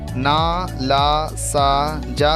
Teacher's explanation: ऊपर के दांतों तथा मसूड़ों के संधि स्थल से थोड़ा ऊपर का भाग वर्ष कहलाता है। ना, ला, सा, जा का उच्चारण करते समय जीभ वर्ष क्षेत्र को स्पर्श करती है, अतः ये वर्ष ध्वनियाँ कहलाती हैं।